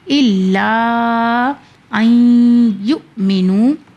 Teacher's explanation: یہاں پہ ہم نے نون کو نہیں پڑھا، نون کو ہم نے وہاں سے ہٹا دیا۔ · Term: ادغام